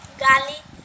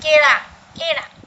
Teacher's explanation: ल के जितने भी वर्ड हो जाते हैं वहाँ क्या हो जाता है र का प्रयोग हो जाता है